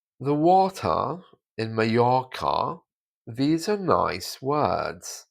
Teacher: In this sentence, the letter R is taken away. You don't hear it at all in received pronunciation or in my accent, which is generally southern London. The water, the R is changed to an A.